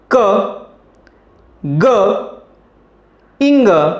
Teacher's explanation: the back part of the tongue touches to the soft palate or the vellum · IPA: /k/ , /g/ , and /ŋ/